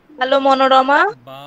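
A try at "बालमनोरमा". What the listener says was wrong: বাল উচ্চারণটা হবে বাল মনোরমা। বাল মনোরমা। বাল মনোরমা। ওখানে একটা অকার আছে, ওই অকারটা উচ্চারণ করতে হবে। বাল মনোরমা।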